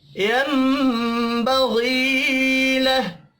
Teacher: यम गुन्ना होगा, बग़ी गैन को पुर पढ़ेंगे। या मद्दा को एक अलिफ के बराबर खींच कर पढ़ना है।